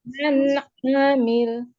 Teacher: Ainnya jangan dipanjangkan, pendek ya. Man amil. Masih panjang.